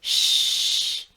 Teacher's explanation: You are pushing a lot of air out and your vocal cord is not buzzing. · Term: shush